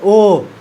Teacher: अब आया ए है ए और आय तो ए आय बोलता है कंठ से भी और तालु से भी ए आय कंठ तालु और ओ कंठ ओष्ठ बोलो ओ कंठ भी आ रहा है और ओठ भी आ रहा है